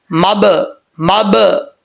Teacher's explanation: مب، ایسے ہونٹوں کو آپس میں ٹکرانا ہے، ٹکرا کے یکدم جو وہ چھوڑنا ہے۔ مب، مب، یہ قلقلہ ہے، اس میں قلقلہ لازمی ہے کیونکہ ساکن ہے، یہ حروف قلقلہ میں سے ہے۔